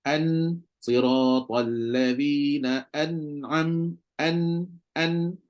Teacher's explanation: ghunah tu ada cuma tak banyaklah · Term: izhar